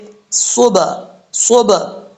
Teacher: صبح، صبح، با کا مخرج ہے، دونوں ہونٹوں کی تری والی جگہ آپس میں ٹکرائے گی تو با پڑھا جائے گا۔ جب قلقلہ کریں گے تو دونوں ہونٹوں کی تری والی جگہ جو ہے، اوپر والا ہونٹ اور نیچے والا ہونٹ آپس میں یکدم ٹکرائے گی تو یہ صحیح طریقے سے پڑھا جائے گا۔